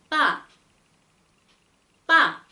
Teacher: 이 쌍을 발음할 때는 전혀 내쉬는 숨이 있어선 안 된다